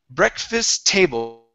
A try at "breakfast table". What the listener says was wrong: One T sound. Only one T. Okay. So take off this T. You do not need to say that T. So you want to say breakfast table.